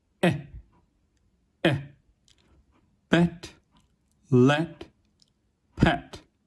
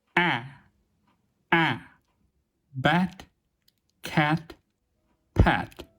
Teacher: /ɛ/ is pronounced with unrounded lips a bit more open than in the high front vowels, while /æ/ is pronounced with the mouth wide open. Both of them are produced with a relatively relaxed tongue.